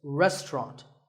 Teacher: in British English you might hear just two syllables